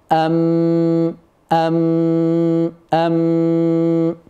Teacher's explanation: الميم تخرج من الشفتين والغنه تتولد